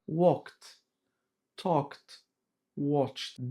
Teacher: The ED ending has three sounds. T sound after voiceless consonant P, K, S, CH, SH, and F.